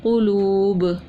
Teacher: پیش تھا نرمی سے پڑھا، واو مدہ تھا ایک الف کے برابر کھینچ کے پڑھا، اور دو پیش کی تنوین تھی غنہ کر کے پڑھا، اور وقف کون سا کیا؟ وقف الاسکان، اور کیا کیا؟ قلقلہ بھی ہم نے کیا ساتھ میں